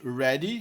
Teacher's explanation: O I, o EA, representa na verdade E aí nesse som. A pronúncia não é I, sim E.